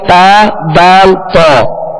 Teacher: زبان کی نوک اور اوپر کے دانتوں کی جڑ، اس سے تا دال تا 3 حروف ادا ہوتے ہیں. ان کا ایک ہی مخرج ہے تا دال تا.